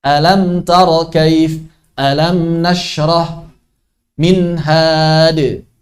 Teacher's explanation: Kemudian ada gunnah yang naqisah, yakni nun dan mim ketika sukun dibaca idhar. Sama seperti huruf sukun yang lain. 1 harakat saja.